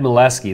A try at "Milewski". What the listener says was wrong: It's like the W's in Europe are never pronounced like a W, they're pronounced like a V. Like Wagner. Like Milewski, yeah, that's exactly right.